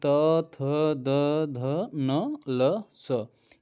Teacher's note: त, थ, द, ध, न, ल, स, ये सभी के सभी दंत वर्ण में आएंगे